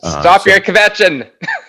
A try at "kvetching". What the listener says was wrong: Stop your kvetching. Yeah, I didn't love the way you said that. You made it sound like there's a syllable, kvetching.